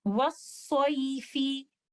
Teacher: In case of continuation, there is no mad. Rather, I will recite it with a slight stretching of letter leen, and this stretching is less than 2 counts. But in case of stopping, I have an option of maddul leen with 2, 4, or 6 counts.